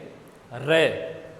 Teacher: है कंपन होता है प्र कंपित कंपन उत्पन्न होता है और लुंठित का मतलब लुढक करके जीवा वाइब्रेट करती है तो ऐसा लगता है जैसे जीवा के ऊपर लुढक करके आ · जब रे का हम उच्चारण करेंगे र तो जीवा के ऊपर वाइब्रेशन होता है कंपन होता है प्र कंपित कंपन उत्पन्न होता है और लुंठित का मतलब लुढक